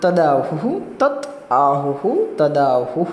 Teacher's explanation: તો જ્યારે અનુનાસિક વર્ણ પરિવર્તન થાય તો તકારના સ્થાનમાં પંચમ વર્ણ નકાર થાય, પરંતુ અહીં આગળ અનુનાસિક પરિવર્તન નથી. એટલા માટે તકારનો દકાર સામાન્ય પરિવર્તન છે, તો એ તૃતીય વર્ણ.